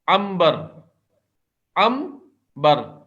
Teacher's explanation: اقلاب، تعریف. نون ساکن کی آواز کو میم سے بدل کر غنے کے ساتھ پڑھنا. میم سے بدل کر نون ساکن کی آواز کو، یعنی اس کو فزیکلی نہیں بدلیں گے کہ نون ساکن ہٹا کر وہاں پہ میم ساکن رکھ دیں گے، نہیں.